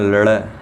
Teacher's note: और द्विस्पृष्ट वर्ण है ये, तो द्विस्पृष्ट वर्ण कौन सा हो गया, ड़ हो गया, और इसका उच्चारण स्थान दंत मूर्धा हो गया